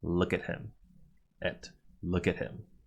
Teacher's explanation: with “at” just being a preposition pointing the verb at the object we don’t stress it and so we use a weak form